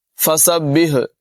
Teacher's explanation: ہاں کی آواز نمایاں کرنا ضروری ہے، اس کو حلق کے درمیان والے حصے سے ادا کریں گے